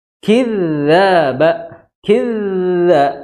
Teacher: Dzaba, jangan kidzaba, ya. Dza itu di ujung lidah bertemu ujung gigi seri atas.